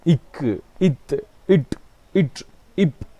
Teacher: இந்த இக் என்று சொல்கிறப்ப சுவாசப்பையிலிருந்து வருகிற காற்றை நாங்கள் அப்படியே தடை பண்ணி வெளியில் அந்த காற்று வருகின்ற பொழுது ஒரு வெடிப்போட வெளியே வரும் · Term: வெடிப்பொலிகள்